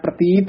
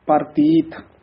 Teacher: ਪਰਤੀਤ ਰਾਰਾ ਪੂਰਾ ਬੋਲਣਾ ਪ੍ਰਤੀਤ ਨਹੀਂ ਕਹਿਣਾ